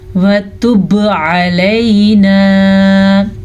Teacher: وَتُبْ عَلَيْنَا. با پہ پھر سے قلقلہ ہو رہا ہے کیونکہ با حروف قلقلہ میں سے ہے